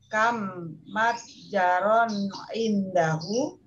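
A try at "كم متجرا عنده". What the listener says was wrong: Naam, ahsanti.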